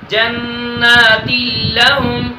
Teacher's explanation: نون تنوین کے بعد لام آیا ہے، اس وجہ سے ادھر ادغام بلا غنہ کر کے پڑھیں گے جنات لہم. غننے کے ساتھ نہیں پڑھیں گے جنات لہم، یہ غلط پڑھا جائے گا.